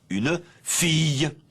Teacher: au cours du XXe siècle, le L palatal est passé à iode. Et nous prononçons une fille.